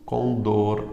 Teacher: Condor, a mais forte é o dor